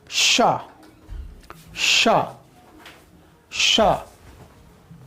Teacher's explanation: तालु से निकलना चाहिए। यानी कि बोलते वक्त जो हमारा जिभ है वो तालु में जाकर स्पर्श करना चाहिए कि या स्पर्श करने की कोशिश करनी चाहिए, है ना। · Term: तालव्य श